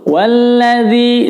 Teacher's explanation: Perhatikan di awal ayat keempat ini, walladzi, ini zal sekali lagi menyebutnya harus lembut. Walladzi, zi-nya dibaca panjang karena kasrah diikuti sukun.